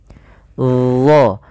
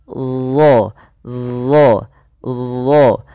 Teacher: Yang dimana isti'la itu berkenaan dengan posisi lidah kita, yaitu pangkal lidah kita angkat ke langit-langit agar menempel, ya, supaya menebalkan huruf huruf dha ini. Nah, ujung lidah ketika melafalkan huruf dha itu kita tempelkan dengan gigi seri atas kita. Dha, ujung lidahnya nempel.